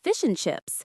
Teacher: The and is reduced to just an N sound. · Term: reduction